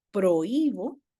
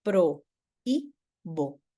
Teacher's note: prohíbo tiene un hiato acentual, pro y bo, ¿sí?